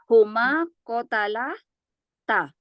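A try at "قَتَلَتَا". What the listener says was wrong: Ya, kotalata panjang taknya.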